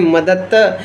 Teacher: जैसे कोई उदाहरण देखते हैं मदद द जो है वो है घोषीकरण शब्द उसको हम मददत्त करके ध्वनि परिवर्तन मदद के रूप में भी यूज़ करते हैं उसे हम कहते हैं मदत्त तो द का त में परिवर्तन यानी घोष शब्द का अघोष में परिवर्तन इसे हम अघोषीकरण के नाम से भी जानते हैं